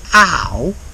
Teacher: So, he doesn't say how to speak. He drops the H in how.